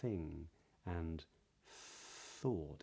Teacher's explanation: in a word like thing and thought, it's just air, but it's allowed to travel out during the TH sound. The second important thing is that there are two types of TH. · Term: voiceless th, voiceless TH